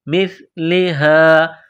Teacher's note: او مثلہا، حمزہ کو واو کے ساتھ ملانا ہے، او مثلہا، میم کو سا کے ساتھ ملانا ہے، زبان تھوڑی سی باہر نکالیں گے، سا کو پڑھتے وقت